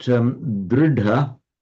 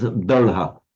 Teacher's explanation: an intervocalic d in Sanskrit, it becomes a retroflex l in Pali